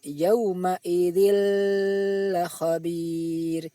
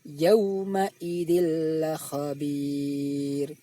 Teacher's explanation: Contoh bacaan idgham bila hunnah berupa tanwin bertemu lam. Bunyi tanwin tersebut dimasukkan ke dalam huruf lam dan tidak boleh didengungkan.